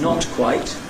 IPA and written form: nɒt kwaɪt (not quite)